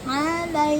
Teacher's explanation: ain ada di tengah tenggorokan , alai ya, keluarkan hak mustahak pada lam berfathah, jangan lai